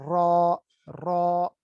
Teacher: زبان کی نوک اوپر والے دو دانتوں کے مسوڑے سے ملنے سے ادا ہوتی ہے اور وہاں پر یہ وائبریٹ کرتی ہے. ٹھیک ہے، ایگزیکٹلی اس کے ساتھ ملتی نہیں ہے لیکن وہاں وائبریٹ کر را، را.